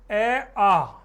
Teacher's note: सबसे जो चौड़ा जो मुंह खुलता है वो खुलता है आ पे। तो अकेला आ आएगा आपके किस पे, विवर्त पे।